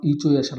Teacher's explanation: इ चो य शनाम ये जो वर्ण है तालू से बोले जाएंगे